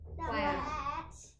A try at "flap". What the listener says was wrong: Flap. With a P at the end.